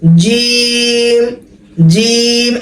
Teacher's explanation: জিম হবে না, জিহ্বার মধ্যখান উপরের তালুতে লাগবে,